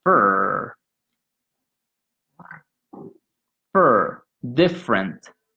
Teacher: notice that the middle vowel is eliminated